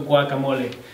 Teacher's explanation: En el ejemplo de guacamole, vemos que al principio se convierte en una G velar, lo que hace que pronuncie la G de guacamole. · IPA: [ wa ka 'mo le ]